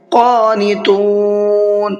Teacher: قاف کو پر کر کے بھی پڑھنا ہے اور ساتھ ساتھ کھینچ کر کے بھی پڑھنا ہے